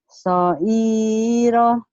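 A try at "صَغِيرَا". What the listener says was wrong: Soiro. Sogi Bu, ini G, gin ya. G. Sogiro bukan soiro ya Bu ya.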